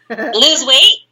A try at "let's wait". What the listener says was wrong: Let's. L-E-T-S, wait. Not lose.